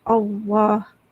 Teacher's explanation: alif lam tu sebenarnya bacaan dia kena nipis, tapi sebab baris atas dia kena baca dengan tebal.